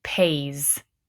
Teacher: notice this s is making the z sound because of that vowel pair